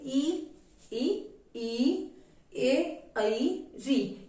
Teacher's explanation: अग्र स्वर होते हैं जिसका उच्चारण करते समय जीभ का आगे का भाग जो है वो क्रियाशील रहता है। इसमें आपके आएंगे ई, ए, ऐ और री।